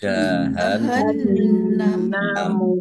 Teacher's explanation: Nun tasdid dibaca gunnah atau mendengung, ditahan kira-kira 2 harokat agar tampak dengungannya.